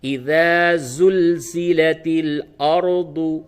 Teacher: را کو پر کر کے پڑھیں گے